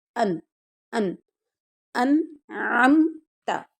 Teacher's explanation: ان یہاں نون ساکن ہے لیکن اس کو اظہار کریں گے کیونکہ آگے حروف حلقی عین آ گیا ہے۔ حروف حلقی میں سے جب کوئی نون ساکن کے بعد آ جائے تو پھر وہاں پر اظہار کرتے ہیں، ان، ان، انعمت، تو نے انعام کیا۔